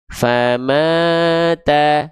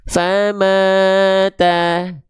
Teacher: Nada saya nggak ngayun, tapi tetap 2 kali ayun kadar panjangnya.